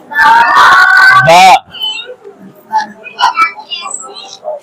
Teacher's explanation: बा का मखरज दोनों होंठों की तरी वाला हिस्सा